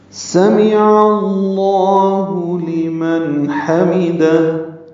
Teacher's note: سین کو صفیر کی آواز سے یعنی سیٹی کی آواز سے ادا کرنا ہے